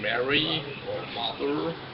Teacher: the bilabial nasal M, as in Mary or mother, is a very conserved structure in baby language